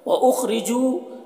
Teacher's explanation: جو میں واو مدہ ہے، اسے ایک الف کے برابر کھینچ کر پڑھیں گے، میں کے نون میں اخفا ہو رہا ہے۔